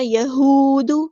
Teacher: واو مد آیا ہے تو مد اصلی کریں گے، الف کے برابر لمبا کریں گے، لیکن دال کی پیش کو لمبا نہیں کریں گے، حرکات کو ہم لمبا نہیں کرتے ہوتے، یہودو نہیں، ٹھیک ہے، یہود۔